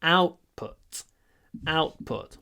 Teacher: the stress is on the first part of the word